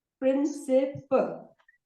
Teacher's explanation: In English, when we say principal, the stress is on the first syllable.